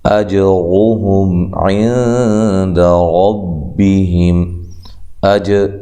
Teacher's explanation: حمزہ کو تحقیق سے جیم پہ قلقلہ، را کو موٹا، ہم میم ساکنہ کا یہاں اظہار ہے۔